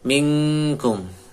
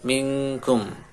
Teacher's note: ikhfa ee disamarkan Kemudian untuk ikhfanya mendekati makhraj Kaf mingkum seperti ng ya huruf ng minkkum wala minhum Nun syukur